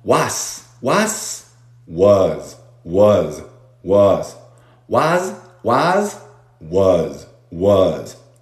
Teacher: La U corta y la S suena a Z.